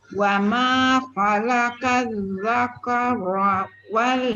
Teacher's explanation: Dia punya tebal tu dekat ra saja dengan qaf. Yang lain semua nipis.